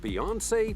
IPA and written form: biˈjɒnseɪ (Beyoncé)